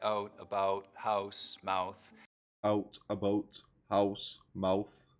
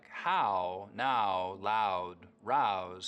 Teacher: raising the start of the diphthong in words like out and about, so that instead of it starting very open, ow, it's starting from somewhere in the middle of the mouth, oh. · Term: Canadian raising